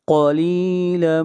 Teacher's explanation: قاف موٹا پڑھیں گے، حروف مستعلیہ میں سے ہے۔